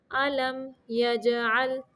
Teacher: یہاں پہ اظہار شفوی کا قاعدہ ہے، صرف ظاہر کرنا ہے میم کو